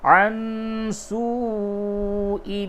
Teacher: نون ساکن کے بعد سین ہے، اخفا کیجئے